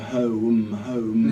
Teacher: With the syllable awareness, the only two that were problematic there was home, and the problem there is when you say home, it sounds like two syllables